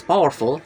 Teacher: The root word is power and the suffix is full. The stress is on the first syllable power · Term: stress preserving suffix